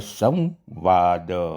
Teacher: અનુસ્વાર પછી વ છે તો આપણે સ્વર ને બદલે અનુનાસિક વ નો ઉપયોગ કરીશું